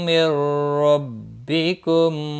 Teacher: نون ساکن کے بعد را آیا ہے، ادغام ہوگا لیکن گنہ نہیں ہوگا